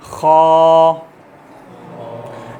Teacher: हा आपने नोट किया, सेंटर से निकल रहा है। खा हलक के इब्तिदाई हिस्से से निकल रहा है।